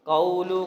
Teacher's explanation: قول قاف موٹا پڑھیں گے لیکن اس کے بعد واو لین ہے، واو ساکن ہے، اس سے پہلے زبر تو واو لین ہوتا ہے۔